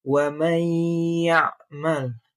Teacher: Di sana ada nun mati bertemu ya. Jadi dibaca dengan dengung sekitar 2 harokat. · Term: idgham bigunah